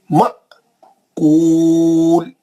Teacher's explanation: الف پہ حمزہ ساکنہ کا جھٹکا ہے